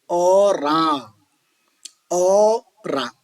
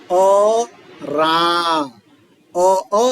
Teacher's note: अ बोलने वक्त अ के साथ वो अनुस्वार नहीं आना चाहिए